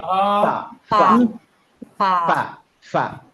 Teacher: এফ ইংলিশে হচ্ছে এফ, ফা। ফাতে দেখেন বাতাসটা বের হয়ে যায়, জাস্ট মুখ থেকে বের হয়ে যায়, এটা ঠোঁটে লাগে